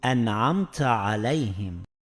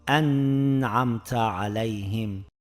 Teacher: Izhor qoidasi bo'yicha o'qiyotganimizda so'zimizga g'unna yoki boshqa qoidalarni qo'shmasdan sukunli nunimizni tiniq bildirib o'qiymiz.